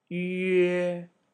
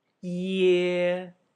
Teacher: The only difference is whether or not you round your lips or smile. Ye, smile. Yue, round your lips.